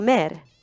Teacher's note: The back vowel in mor or mother fronts into mer